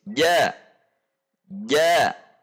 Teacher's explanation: Baik, sifat selanjutnya adalah al-istifal dan al-infitah. Al-istifal berarti huruf jim, pangkal lidah rileks, posisi di bawah, sehingga huruf menjadi tipis, tidak tebal. Al-infitah juga posisi lidah dengan langit-langit atas itu terbuka.